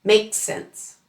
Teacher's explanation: The s at the end of makes blends into the s at the beginning of sense.